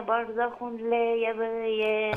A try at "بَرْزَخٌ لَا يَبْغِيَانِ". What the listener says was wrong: برزخ لا، نون التنوين لا تظهر، تدغم، برزخ لا.